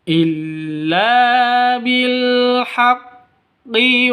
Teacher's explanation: la panjang dua ketukan karena ada alif diawali dengan fathah mad asli atau mad thabi'i.